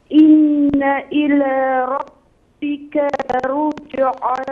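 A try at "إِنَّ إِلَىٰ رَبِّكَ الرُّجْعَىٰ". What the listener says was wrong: نه خواهرم کاف ربکر کاف میچسبه به را به همراه کاف تلفظ میشه. ربکر رجع. ربکر رجع.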